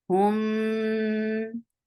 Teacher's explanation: there is akmal gunna, so you're keeping the sound in your nose for a longer time.